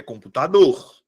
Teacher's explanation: A minha sílaba tônica é a última.